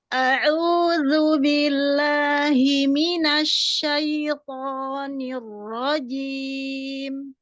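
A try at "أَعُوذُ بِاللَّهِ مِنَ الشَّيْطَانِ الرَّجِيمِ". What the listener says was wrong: Dhammahnya sempurnakan. A'udzu, dzu.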